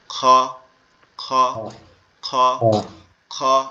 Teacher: খটা হবে আমাদের এই যে কণ্ঠনালীর শেষ ভাগ অর্থাৎ গলার সাথে এই দাড়ির যে অংশটা লেগে আছে, এই অংশটা থেকে yes, উচ্চারণ হবে খ খ খ খ, এরকম ভাবে।